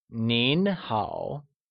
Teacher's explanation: Nín is spoken with a mid rising tone and hǎo with a falling rising tone